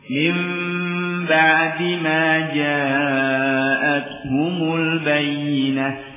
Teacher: Jadi caranya dengan dua bibir ini ditekan, dikatupkan, cuma tidak kuat menempelnya, ya. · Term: iqlab